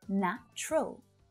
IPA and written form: 'næ tʃrəl (Natural)